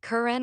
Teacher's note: The T gets stopped, compressed into a fraction of a second, and then discharged through the nose as the N takes over. The burst never comes. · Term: nasal release